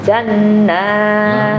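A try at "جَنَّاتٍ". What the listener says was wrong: Lamakan lagi.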